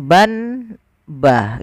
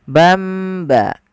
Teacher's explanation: Apabila kita mendapati di dalam bacaan Al-Quran kita, teman-teman, ada nun sukun atau dia tanwin an, in, un, bertemu setelahnya satu huruf saja, yaitu huruf ba, maka nanti suara nunnya dirubah atau suara tanwinnya dirubah menjadi mim.